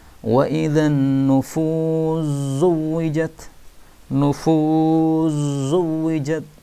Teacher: maka sinnya diidghamkan pada zain